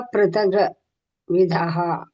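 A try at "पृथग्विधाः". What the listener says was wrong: ವ್ಯಂಜನ ಇದ್ದಾಗ ನಾವು ಗಕ್ಕೆ ಅಸ್ವರ ಕೂಡಿಸಂಗಿಲ್ಲ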